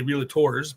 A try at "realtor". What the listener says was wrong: Realtor. There's no law. There's no law in realtor.